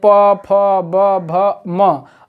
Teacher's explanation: प वर्ग इसे ओष्ठ वर्ण, दोनों ओठों की सहारे से हम बोलते हैं प, फ, ब, भ, म, अर्थात दोनों ओठ जब तक चिपकेंगे नहीं तब तक इनका उच्चारण नहीं हो पाएगा।